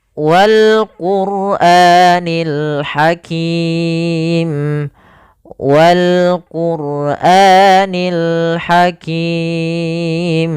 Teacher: Alif lam yang kita baca dengan jelas suara lamnya, wal langsung ke lam. Kemudian wal Qur'a, ra di sini ra tafkhim yaitu ra tebal. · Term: alif lam yaitu qamariyah